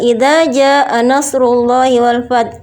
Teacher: lafzul jalalah yang sebelumnya berharokat dhammah, maka harus dibaca dengan tebal atau tafkhim. Sedangkan pada ayat yang kedua fi dinillahi afwaja terdapat lafzul jalalah yang sebelumnya berharokat kasroh, maka harus dibaca dengan tarqiq atau tipis.